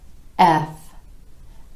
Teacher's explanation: drop your jaw just a bit for this sound and then roll into the consonant by letting your teeth and bottom lip come together